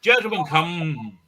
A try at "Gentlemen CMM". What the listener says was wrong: How you pronounce it's not quite the same. It's just gentlemen CMM. just the letters. Oh, it's just my initials. Just my initials.